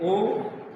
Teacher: कंठ पे जोर पड़ता है और होंठ पर भी वायु स्पर्श करती है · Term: कंठोष्ठ